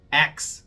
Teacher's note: você sabe que o X tem esse som de 2 consoantes, né? É o KS, X. E é o chamado de consonant cluster.